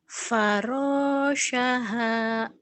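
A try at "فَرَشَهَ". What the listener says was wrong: farasyaha. Iya bagus.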